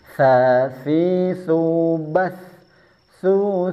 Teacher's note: Kalau sa si su bas ini tsa. Jadi ujung lidahnya harus ditempelkan ke ujung gigi seri atas sini. Bahkan terkesan agak keluar sedikit. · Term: huruf tsa